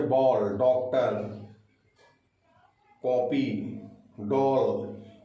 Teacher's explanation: उच्चारण न तो आ की तरह होता है न तो ओ की तरह होता है, बल्कि दोनों के बीच का होता है।